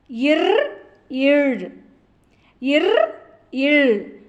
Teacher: மேல்வாயை நாக்கின் நுனி வருவதால் பிறக்கும் மெய்யெழுத்துக்கள்